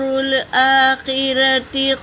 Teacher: لام پر سکون ہے، یہ حرف قمری کا قاعدہ ہے، اس لیے الف کو نہ پڑھیں۔ اور حمزہ کے اوپر دیکھو کھڑا زبر ہے تو ایک الف کے مقدار کھینچیں گے